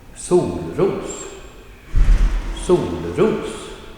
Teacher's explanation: the pronunciation in this combined word is first a falling tone, accent 2, sol, ros, solros, solros, right?